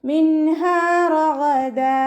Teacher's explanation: ഗൈനിൻ്റെ മഖ്റജ് അദ്നൽ ഹൽക്കാണ്, തൊണ്ടയുടെ ആദ്യ ഭാഗം, നമ്മുടെ നാവ് അവസാനിച്ച് കഴിഞ്ഞിട്ടുള്ള ഭാഗത്താണ് ഗൈനിൻ്റെ മഖ്റജ്. · റോ ഫത്തഹയാണ്, ഉയർത്തി ഉച്ചരിച്ചു കൊടുക്കുക. നമ്മൾ മലയാളത്തിൽ റാ എന്ന് പറയുന്നത് പോലെ പറയരുത്, റോ തന്നെ പറയാൻ ശ്രദ്ധിക്കുക കേട്ടോ.